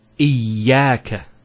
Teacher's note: Notice the ya gets a double vowel because of the Shaddah there.